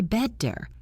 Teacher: you need to soften that T into a quick tap against the roof of your mouth